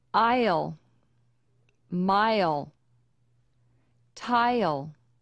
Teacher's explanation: add a y sound before the L in i l words first say the long I then say Yol as your voice